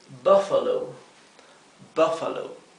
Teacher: la U se pronuncia bien cortita porque está seguida por una consonante doble